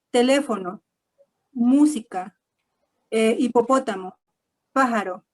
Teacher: aquellas palabras en las que tienen el acento en la antepenúltima sílaba